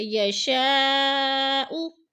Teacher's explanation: یشاء پہ جو ہے مد متصل ہے، 4 الفی مد ہے، 4 الف کے برابر ہم نے اس کو کھینچ کر پڑھنا ہے، لمبا کرنا ہے